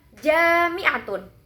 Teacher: tekanan di sini jatuh pada suku kata ja karena memiliki vokal yang panjang.